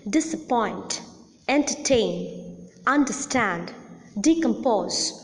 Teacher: the last syllable or the third syllable is the most prominent syllable hence the last syllable receives the primary accent · Hence, the last syllable receives the primary accent. But there is another prominent syllable in these words, but a little less prominent than the last syllable, and that is the first syllable of all the words